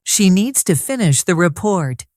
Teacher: Stress needs and report. The other words are soft.